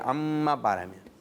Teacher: मीम पर तशदीद है और इन्होंने माशाल्लाह गुन्ना करते हुए अदा किया।